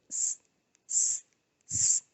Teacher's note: Next we have the alveolar fricatives, and the voiceless sound is s